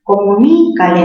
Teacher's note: La mayor fuerza está en ni. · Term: palabra esdrújula